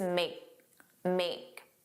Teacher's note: you didn't hear that K, it was just make. And that makes the pronunciation smoother, which is why it sounds like we're talking very fast.